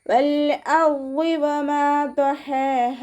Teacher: വാദ് ഇസ്തിഅലാൻ്റെ ലെറ്ററാണ്, ഉയർത്തിയിട്ട് ഉച്ചരിക്കുക കേട്ടോ